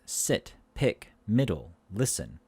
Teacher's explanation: this is a high front lax vowel not tense lack so again we lift our tongue to the top of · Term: short e, short E